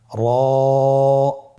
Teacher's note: র হরফটি এখানে আমরা পর উচ্চারণ করব। মোটা করে উচ্চারণ করব। এবং র হরফটি এক আলিফ টেনে পড়ব।